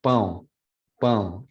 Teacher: nasal vowels go out of the nose and the mouth. So that's what the majority goes to the nose, but some of it still makes it out of the mouth. · Vocales nasales que ocurren en portugués, francés, por ejemplo, durante su articulación, el velo del paladar está abierto, está más abajo, en una posición menos elevada. Entonces el aire se escapa por el canal oral y también por la cavidad nasal. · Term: nasalized vowel